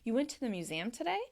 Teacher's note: That's not actually in typical question form, but the fact that I'm raising my voice at the end of that sentence helps the other person understand that I'm asking a question